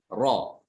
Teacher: Dan ini uniknya ro itu dia satu-satunya huruf yang dia ketika diucapkan itu disertai dengan bergetarnya ujung lidah, ya. Bergetarnya ujung lidah ketika mengucapkan huruf ro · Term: sifat tikror